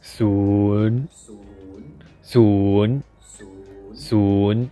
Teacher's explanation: So the intonation of the number ศูนย์ you start low and then rise